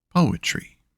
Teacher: 1 stressed syllable, then 2 unstressed. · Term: dactyl